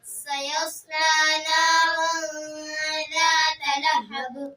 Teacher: سیصلی ایک الف کی مقدار میں کھینچیں گے لام کو